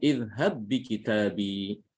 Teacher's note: Tanda tasydid seperti ini. Ini menunjukkan bahwa ini ba-nya itu harus diidghamkan, tidak boleh diqalqalahkan.